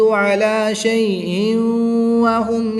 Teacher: تنوین کے بعد حرف یرملون میں سے واو ہے تو یہاں پر ادغام مع الغنہ ہوگا